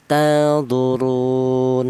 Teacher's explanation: boleh dibaca qasar yaitu satu alif atau dua harakat